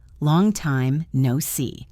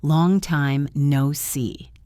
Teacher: Did you get the rhythm? It goes down and then up.